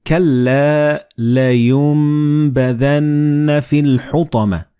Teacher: the noon and ba, they will be assimilated together and you will pronounce them as meme.